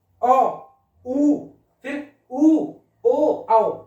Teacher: इन स्वरों के उच्चारण में होठों का आकार गोल हो जाता है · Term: व्रतामुखी